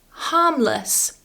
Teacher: careful that you're not saying this with the strong form less but it's lus it's more relaxed